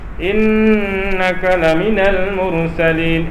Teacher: In dia dengung, tapi dia tidak sampai menyengau.